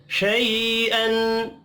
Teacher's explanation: यहाँ पर इज़हार हल्की होगा, गुन्ना नहीं होगा।